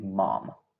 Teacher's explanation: It is nasal indeed because remember, if my nose is closed, then I can't produce that sound. Therefore, it's a nasal sound. · My lips are touching both of them, so that means that it is a bilabial place of articulation.